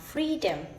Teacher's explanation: so let me take an example when I pronounce Freedom so free is louder and longer · So free is louder and longer than the freedom. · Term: primary stress